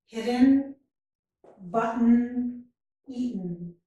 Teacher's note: In each of these words, we don't pronounce the vowel in the last syllable. Hidden. I go right from the first syllable to a N sound. · Usually you need a vowel to make a syllable. In syllabic N, we don't hear a vowel sound. We only hear the N sound. And this syllabic N is represented with the N symbol with a dot underneath. · What happens is the vowel in that syllable is not pronounced. So the N sound makes a syllable.